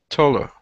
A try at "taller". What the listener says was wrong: Good, all right.